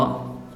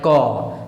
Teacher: तो इस क ख ग का जो उच्चारण स्थान होता है वो होता है कंठ